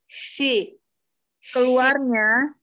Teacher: Keluarnya huruf sode itu keluarnya dari ujung lidah yang hampir bertemu dengan gigi seri bawah gitu loh.